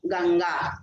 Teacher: तो तू जो है तवर्ग ग्रुप का था, इसलिए वहां पर माँ की जगह न आया, लेकिन गम प्लस गा, गा ये जो है कवर्ग ग्रुप का है, इसलिए गम के जगह कवर्ग ग्रुप का जो अंतिम अनुनासिक अक्षर है वो आएगा